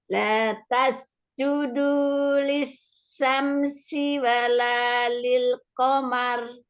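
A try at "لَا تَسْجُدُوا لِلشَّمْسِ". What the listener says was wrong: Shinnya belum dapat lagi. Ini shin. Lisha. Nah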